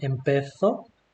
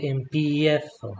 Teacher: So instead of saying empezo, you say empiezo. So you should have this diphthong. So this is a ye in Spanish. So e gets split into ye. It's like you introduce this e sound before the a sound.